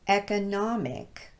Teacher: However, if we change the ending of this word to the suffix ic, it's now pronounced economic with the short E sound at the beginning. The stress pattern changed because of that suffix, and now the initial E is no longer occurring right next to the stressed syllable, so we can't use the schwa vowel anymore.